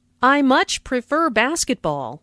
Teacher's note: Notice how much is stressed to show that the speaker really likes basketball.